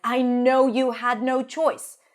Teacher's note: Almost every word is stressed here because it's such a powerful sentence